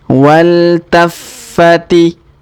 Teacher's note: Huruf fa kita tahan dan tekan karena terdapat tanda tasdid di sini.